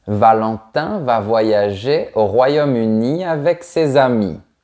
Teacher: Remarque qu'on force la dernière syllabe et on tombe sur la fin de la phrase.